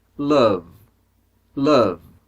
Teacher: Então o último som é de V. V é um som vozeado.